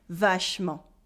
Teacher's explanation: vashomo and in everyday spoken french we would say vashman because we cut the uh in the middle